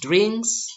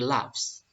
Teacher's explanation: bunyi akhirnya ini tidak bersuara atau voiceless, ya. Jadi pita suaranya ini tidak bergetar, ya. Seperti contoh di bagian B kita lihat di sini ada kata kerja drink, ditambahkan s menjadi drinks, ya.